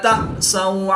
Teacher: حمزہ ساکن ہے جس کو جھٹکا دے کر پڑھیں گے. واو ساکن سے پہلے سین پر زبر ہے تو واو لین اس کو بھی لمبا نہیں کریں گے.